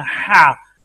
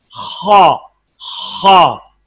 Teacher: हा में खराश नहीं है और आवाज बारीक है, हा, और खा में खराश है और आवाज फुल है, पुर फुल साउंड, खा खा।